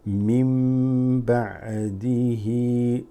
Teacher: This new mim here is to let you know it's followed by a ba. This has a rule where instead of saying min ba'di, you say mim.